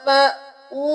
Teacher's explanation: मद 3 उंगली के बराबर खींचेंगे